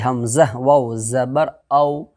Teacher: واو لین کو نرم آواز کے ساتھ جلدی ادا کریں گے